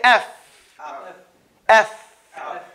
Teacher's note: front teeth that fall upon your inner lip to say fa